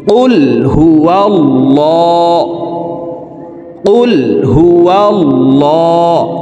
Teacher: প্রিয় দর্শক, এই লামকে মোটা করে পড়তে হবে, অর্থাৎ ল বলে পড়তে হবে, কারণ আল্লাহ শব্দের আগের হারফে জবর অথবা পেশ হইলে এই লামকে ল অর্থাৎ মোটা করিয়া পড়িতে হয়। তো দেখুন, এখানে আল্লাহ শব্দের আগের হারফে জবর আছে, এই কারণে এই লামকে ল বলে পড়ব।